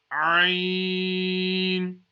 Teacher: The letter Ain is pronounced from the middle of the throat.